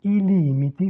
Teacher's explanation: Ici toujours l'allongement vocalique donc on a un mot pluriel ici ilimité c'est-à-dire les limites trois fois le même le même la même voyelle la première syllabe porte l'accent elle s'allonge donc la voyelle parce qu'elle n'est pas entravée par une consonne